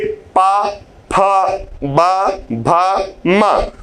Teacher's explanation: तो जब पा वर्ग का उच्चारण करेंगे, यानी पा वर्ग में 5 वर्ण का, तो परस्पर दोनों ओष्ठ आपस में स्पर्श करके ही उच्चारण करेंगे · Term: स्पर्श व्यंजन